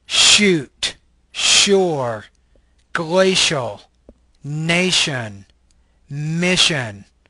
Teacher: This is a palatal fricative voiceless consonant.